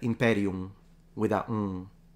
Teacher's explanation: the M at the end of words in classical Latin, ancient Roman authors tell us that it was basically almost as if it wasn't there, it was fully nasalized.